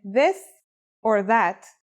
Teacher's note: It's pronounced with the tongue between the upper and the lower teeth. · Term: voiced sound